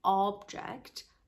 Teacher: if you put the stress in the beginning of this word the O becomes emphatic it becomes along all we say object and it's a noun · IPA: /'ɑ:bdʒəkt/